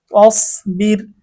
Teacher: এখানে রটা একদম চিকন হবে। পাতলা হবে